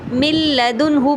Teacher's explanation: نون ساکن مکمل طور پہ مرج ہو گیا لام کے اندر، لیکن اس میں غنہ نہیں ہے، تو ہم کیا کہیں گے، ادغام بلا غنہ، اور کیا کہیں گے، کاملہ، کیونکہ اس میں کوئی ناقص نہیں ہے، 50-50 ساؤنڈ نہیں ہے۔